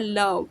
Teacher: आपकी एयर जो है आपकी टंग के साइड से रिलीज होती है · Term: ल साउंड